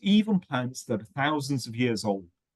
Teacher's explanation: you have groups of two that are linked because there's words starting with a vowel sound